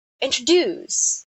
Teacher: the word introduce is pronounced with a stress at the end. So it sounds like this: introduce, introduce.